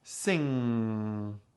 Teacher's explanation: Make sure the front tip of your tongue is downward and not upward, but that the back of your tongue is upward, touching the soft palate. Then try to very slowly transition from the sound to the ah sound.